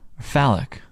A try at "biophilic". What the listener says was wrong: Philic, not phallic.